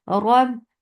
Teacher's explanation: ra is heavy. Make sure you engage the makhraj of ra, and ra has little takrar in it.